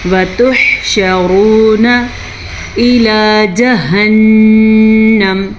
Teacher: ہا کے مخرج کا دھیان رکھیں. شین کے اوپر زبر ہے تو شین کی زبر کو کم مقدار کے ساتھ پڑھیں، نہ کہ کھینچ کے پڑھیں